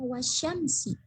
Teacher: Langsung masuk. Jadi alif lamnya tidak dibaca. Langsung masuk ke huruf si syamsiyah. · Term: alif lam syamsiyah